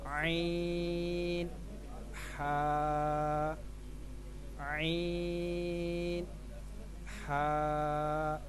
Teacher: حلق کے درمیان والے حصے سے یہ 2 حروف ادا ہوتے ہیں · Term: حلق کے درمیان والا